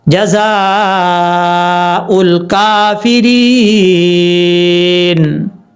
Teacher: مد کو مد متصل کہا جاتا ہے، 2.5 سے 3 الف کے برابر اس کو لمبا کریں گے